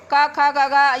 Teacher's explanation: क, ख, ग, घ, ये कंठ से टच होते हैं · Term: का वर्ग